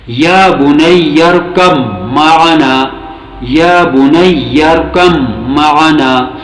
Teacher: یہاں پہ با اور میم دونوں کے بیچ ادغام ہو رہا ہے، اور با کو مکمل طور پر چھوڑ کر میم کو پڑھنا ہوتا ہے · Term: ادغام متقاربین